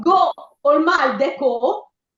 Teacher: uso una vocale chiusa ma senza la dieresi